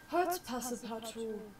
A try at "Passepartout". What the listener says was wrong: Passe partout. Pass partout. Das E spricht man nicht mit.